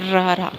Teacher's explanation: ਉਸ ਤੋਂ ਬਾਅਦ ਹੁਣ ਇਹ ਗੱਲ ਤੁਸੀਂ ਯਾਦ ਰੱਖਣੀ ਹੈ ਕਿ ਪਹਿਲਾ, ਦੂਜਾ, ਤੀਜਾ ਕੰਬਣਾ ਵਿਅੰਜਨ ਸਿਰਫ ਇੱਕੋ ਹੀ ਹੈ, ਉਹ ਹੈ ਰਾ ਰਾ, ਕਿਉਂਕਿ ਇਹ ਕੰਬਦੇ ਹੋਏ ਆਉਂਦਾ ਰਾ ਰਾ, ਹੈ ਨਾ, ਜੀਭ ਵਿੱਚ ਕੰਬਦੀ ਹੈ